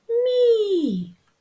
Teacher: коли звук м дружить з голосним і він стає м'якенький і чуємо м'який мі